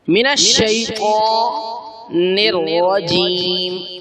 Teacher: را کے اوپر زبر تو را کو موٹا کر کے پڑھنا ہے